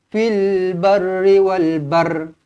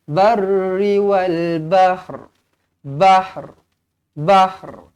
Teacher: Sedangkan ha ada dekat sini. Jadi yang betul dia adalah kita matikan ha, kemudian kita datangkan huruf ra sikit je dekat hujung tu.